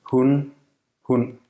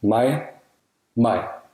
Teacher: This is like a glottal stop without complete closure of the vocal cords, resulting in what's described as a creaky voice. It's phonemic, and its presence can distinguish words that otherwise sound the same. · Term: stød